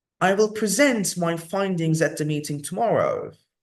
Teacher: so present when it's verb we put the stress on the second syllable